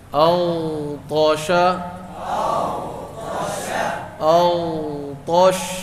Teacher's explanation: رخوت. آواز جاری رہے گی، بند نہیں ہوگی